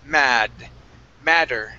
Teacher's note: switch the double T there to a D sound